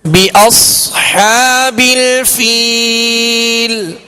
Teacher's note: صاد کو پر پڑھیں گے مگر سیٹی کی آواز بھی اس میں پیدا کریں گے